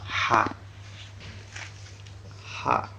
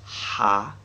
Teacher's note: Makhraj huruf ha adalah tenggorokan bagian tengah.